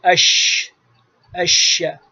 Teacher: آواز پھیل جاتی ہے ہوا کے ساتھ، اش بیچ زبان اور بیچ تالو اپنے وہاں شین لکھ بھی دیا ہے، دیکھ لیں۔ · یہ شین کا مخرج ہے، بیچ زبان اور بیچ تالو سے شین ادا ہوتا ہے، اور اس کے اندر انفتاح، استفعال، رخوت، ہمس اور تفشی یہ صفات ہیں۔